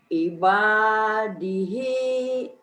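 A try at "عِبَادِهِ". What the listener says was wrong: Ainnya tuh belum mantap ya. Ibadihi. Ain. Itu mah nekannya di awal. Ai. Kayak orang keselak, Bu. Aiba. Bukan i. Jangan ditekan di i-nya. Aiba.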